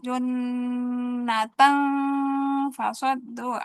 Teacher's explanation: Karena tanwin junatan ketemu fa jadi ikhfa.